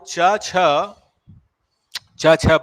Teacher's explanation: च छ का उच्चारण होता है हमारा तालू से